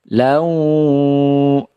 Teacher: wawunya ditahan, didengungkan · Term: idgham bi gunnah